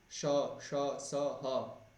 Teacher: इन सभी को विवृत माना गया कि इनके उच्चारण में मुख को जो है थोड़ा सा खोलना पड़ता है